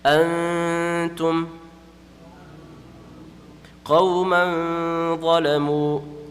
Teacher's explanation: ikhfa will take place with gunna. With gunna just means that we have to stretch it 1 second or 1 alif.